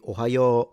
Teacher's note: it kind of stress the beginning a little bit and it's one of those patterns that you start low and go high